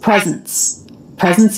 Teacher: in the word presence this letter s makes a z sound